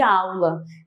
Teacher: Na mesma sílaba. Uma vogal e uma semivogal na mesma sílaba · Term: ditongo